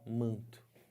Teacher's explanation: Aqui o N não é falado, ele só está nasalizando o A. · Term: nasalizar o A